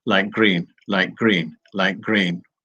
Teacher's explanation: we change that t into a g